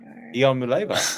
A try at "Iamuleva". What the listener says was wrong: There's one more vowel in there.